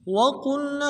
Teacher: واو کو نرم سے ادا کرنا، قاف کو موٹا ادا کرنا ہے، لام کے ساتھ ملانا ہے اور نون کو ہا کے ساتھ ملانا ہے۔